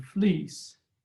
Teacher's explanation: the e as in fleece is a long simple vowel comprised of one sound